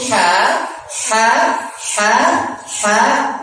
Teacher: Jadi huruf ha, ha, ha, ha, tenggorokan bagian tengah.